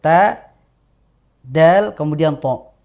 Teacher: ta, dal, dan to itu keluar dari ujung lidah yang bertemu dengan pangkal gigi seri atas.